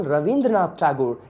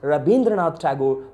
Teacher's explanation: So all the va sounds, even when they speak in Bengali also, they pronounce it as bha. So for example, Ravindranath Tagore, it is pronounced as Rabindranath Tagore by a typical Bengali person.